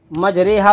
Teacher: زبر کا زیر کی طرف، الف کا یا کی طرف جھکنا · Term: امالہ